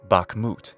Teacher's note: it's still stressed on the final syllable, hence Bakhmut.